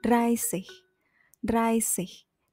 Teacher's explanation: Dan achtung juga, khusus untuk angka 30, penulisannya tidak menggunakan sich, melainkan sich, menggunakan SZ, dan dibaca S normal seperti bahasa Indonesia. Karena SZ di sini stimmloses S, atau S yang tidak bersuara dan tidak bervibrasi.